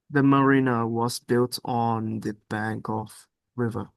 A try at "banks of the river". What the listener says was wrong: just remember to pronounce the S. Okay? banks, banks of the river. I need to be able to hear that clearly.